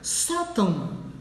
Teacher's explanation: Sótão termina com ão, sílaba mais forte é o só, por isso ganha o acento.